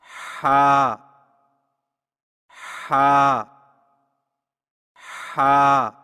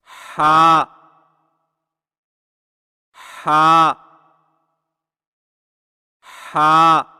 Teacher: حلق کی طرف مضبوطی سے دباتے ہوئے باریک اور رگڑ کھاتی سانس میں پڑھیں، یعنی ہا ہا ہا۔